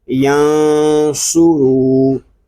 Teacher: صاد یہ حروف مستعلیہ میں سے ہے، اس کو پر پڑھیں گے۔